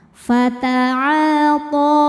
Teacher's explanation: To hukumnya adalah mad tabi'i muqaddar, sebab huruf to berharokat fathah panjang, maka huruf to panjangkan 2 harokat.